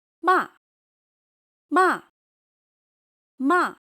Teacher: Fourth tone qùshēng sharp and falling Your voice drops quickly.